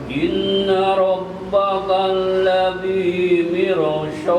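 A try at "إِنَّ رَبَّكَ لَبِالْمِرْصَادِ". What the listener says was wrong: Di sini labil, langsung labil mirsad. Labil mirsad. Jadi semuanya pendek kecuali di ujung. Inna rabbaka labil mirsad.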